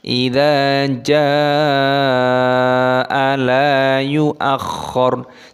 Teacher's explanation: jimnya panjang, mad wajib muttasil dipanjangkan 6 ketukan